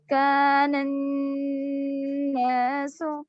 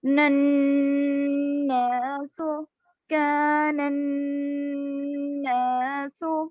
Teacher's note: اذا الشمس کان الناس, یہاں پر دیکھیے نون پر تشدید ہے تو جہاں نون اور میم پر تشدید ہو تو غنہ ہوگا. تو اسی طرح کان الناس, نون کو تھوڑی دیر ناک میں آواز روکیں گے نون کی.